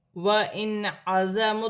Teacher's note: نون ساکن میں غنہ نہیں ہوگا کیونکہ آگے عین حروف حلقی میں سے ہے